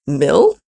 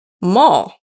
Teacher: And remember, the only difference between these two nonsense words was the vowel. Mill contains the high front vowel I, while mall contains the low back vowel ah.